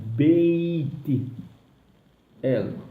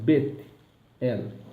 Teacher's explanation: Apesar que tem um yod na frente, você não vai me falar beit el, é bet el. · Há um yud à frente e o tsire embaixo da letra. O som dessa expressão é o mesmo som do tsire, o som de E. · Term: tsire yud